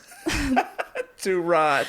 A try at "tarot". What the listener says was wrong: I hear that a lot. They pronounce the T at the end. As long as you don't do that, you're golden. Yeah, I think they're both fine. So what I've noticed is a generational change. People who have been introduced to tarot in the last 20, 30 years, they say tarot.